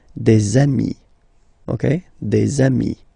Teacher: Okay, and so you've got des ami, okay? And if you make the liaison, so the link between the two, you will get des amis